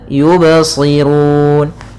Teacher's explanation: ba-nya tidak boleh ada tambahan hamzah ketika qalqalah